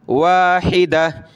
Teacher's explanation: امۃ واحدہ، واو الف زبر وا، حا زیر حی، دال زبر دا، واحدہ، تا دو زبر تن، واحدتن وقفاً واحدہ، گولتا وقف میں ہا بن جاتی ہے۔ یہاں لکھا ہے قف یعنی ٹھہر جائیں، ٹھہرنا لکھا ہے، اس لیے ہم یہاں رک رہے ہیں۔